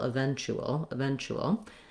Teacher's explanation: So my letter U and my T together say the CH sound and an U sound, like the word chew, eventu. And then I just have a dark L at the end. That has a little bit of a schwa sound before it. So we can see the schwa and the L, eventual.